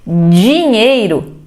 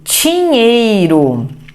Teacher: não sonorizo alguns fonemas